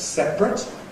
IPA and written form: ˈseprət (separate)